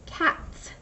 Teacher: If I add an S to the end of the word cat, it becomes cats, which means more than one cat. And I also hear the S, not the Z sound.